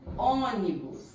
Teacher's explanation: A sílaba tônica é o on. Última, penúltima, antepenúltima. Então, aqui ela é proparoxítona.